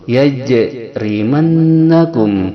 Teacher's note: Yajrimannakum, nun bertasdid hukumnya adalah gunnah, yaitu didengungkan pada hidung 2 harakat